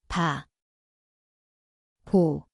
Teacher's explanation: 비읍, Zvuči kao B _, P. Mjesto su oba usna.